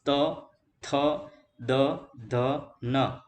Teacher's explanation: જે વર્ણોનો ઉચ્ચારણ કરતી વખતે જીભ દાંતને સ્પર્શે તેવા બધા વ્યંજનોને શું કહીશું આપણે? દંત્ય વ્યંજનો.